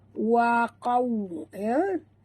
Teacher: Waw sifatnya lin. Jadi bila kita sebut ni lunak, lembut, maka kena muncungkan mulut betul-betul ya.